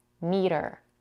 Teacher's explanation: we can pronounce it as a flap T